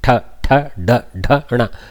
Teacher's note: the tongue rolls back and slaps rolls back and slaps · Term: murdanya portion